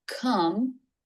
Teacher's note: Back of the tongue makes the K sound, come, lips together for the M in come.